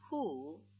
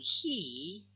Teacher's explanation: When we produce back vowels, for example, U, as in the word who, the lips shaped roundedly. But when we produce sound he, the mouth is spread. The lips are spread.